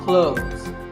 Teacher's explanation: when we say clothes the th in the middle can often be silent